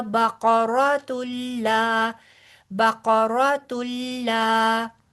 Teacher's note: ये लाम बारीक पढ़ेंगे, देखिएगा मिलाते मिलाते आप कहीं इसको मोटा ना पड़ जाए